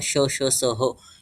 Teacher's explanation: उष्ण वर्णांचा अभ्यंतर प्रयत्न ईषद विवृत्त असतो.